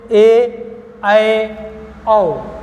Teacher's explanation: अर्ध विपरीत आधा मुख खुले